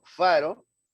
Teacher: estoy haciendo contacto íntima entre el diente superior y el labio inferior